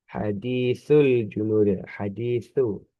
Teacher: Sa itu makrotnya atau tempat pengucapannya ada di lidah ujung yang bertemu dengan gigi sari atas. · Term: huruf sa